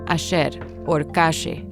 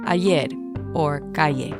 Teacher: They pronounce their double L's and Y's with a sh sound